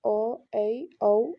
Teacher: अर्ध विवृत half open मुख आधा खुला रहता है